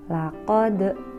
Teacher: cara membacanya yaitu memantulkan huruf Qalqalah dengan tebal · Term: qolqolah kubro